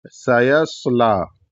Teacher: اور اس میں جو لام ہے یہ لام باریک پڑھا جائے گا، صرف اللہ کا لام پر ہوگا، باقی سارے لام جو ہے یہ باریک پڑھے جائیں گے. اور یہاں پر کھڑا زبر ہے لام پر، تو اس کو ایک الف کے برابر کھینچیں گے، یعنی اس طریقے سے سیصلا، بس اس طریقے سے کھینچیں گے ایک الف کے برابر.